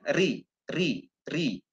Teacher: roh berbeda dengan roh dibaca kasroh berangkat kasrah itu tipis three hanya ujung lidahnya disentuhkan sedikit saja